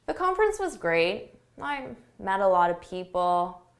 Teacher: A lack of enthusiasm, your intonation goes down, your volume goes down.